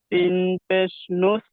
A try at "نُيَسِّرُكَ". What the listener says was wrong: সিন পেশ নুস নয়, নুন পেশ নু, ইয়া সিন জবর ইয়াস।